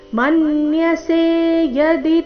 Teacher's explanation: ಮನ್ಯಸೆ ಮೇಲೆ ಆಘಾತ ಯದಿ ಎರಡು ರಸ್ವ